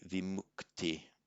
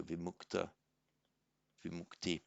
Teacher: So the ch becomes a k before a t.